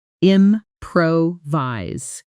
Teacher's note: Notice the stress falls on the second syllable, improvise.